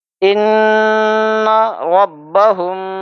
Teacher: میم ساکن کے بعد لفظ با ہے، اس لیے ہم یہاں پہ اخفاء کیا اور غنہ کے ساتھ کیا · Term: اخفاء شفوی